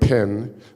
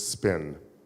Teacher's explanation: say spin and there's no explosion of air